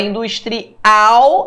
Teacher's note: industrial, a sílaba tônica é a última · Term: oxítona